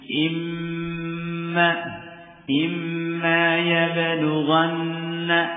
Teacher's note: Nun dan mim yang di tasydid ini dibaca gunah